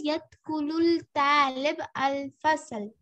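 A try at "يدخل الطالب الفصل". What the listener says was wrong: You see, ta has shadda. So this means alif lam is silent here. Join this lam with this ta. Yadkhulut talibul fasl.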